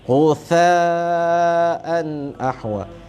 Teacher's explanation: Ujung lidah ni. Tha nipis je dan berangin.